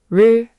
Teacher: >> And the buzzy one, r >> r Retroflex with the buzz.